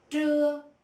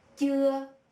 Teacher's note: the word trưa, noon, is pronounced exactly the same with the word chưa, which means not yet.